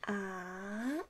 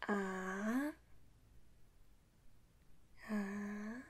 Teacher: And we're moving to third tone. The number is 2 and a little bit low to 1 and then high to 4. Just like a Nike logo.